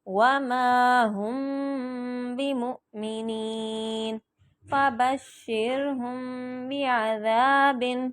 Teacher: میم کے اوپر جزم ہو اور آگے با آ جائے تو اس پہ غنہ کر کے پڑھنا ہے، اور اخفا بھی ہوگا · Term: اخفاء شفوی